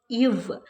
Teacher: மேல்வாய் பல்லை கீழ் உதடு பொருந்துவதால் பிறக்கிறது